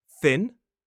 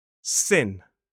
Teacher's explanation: It is the /θ/ sound — the unvoiced th sound — where we put the tip of our tongue on our top teeth, and the /s/ sound.